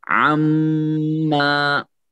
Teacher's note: عزت عما، اب دیکھ لیں یہاں میم جو ہے میم مشدد ہے، غنہ کے ساتھ پڑھا جائے گا اور پھر الف مد بھی ہے